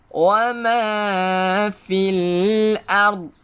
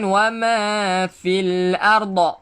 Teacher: Dot ni jangan kita lantunkan. Bukan arda, tetapi ard.